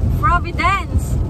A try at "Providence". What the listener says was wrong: Why is it Providence? It's Providence with P, not F. You said Providence. You said F.